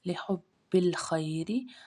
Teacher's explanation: لحب ہا حلقہ درمیان سے ادا ہوگی، اس الف کو ہم نے نہیں پڑھنا، خی میں یا لین ہے، خا موٹا پڑ جائے گا، را باریک پڑ جائے گا کیونکہ را کے نیچے زیر ہے